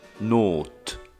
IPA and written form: ˈnoːtː (nótt)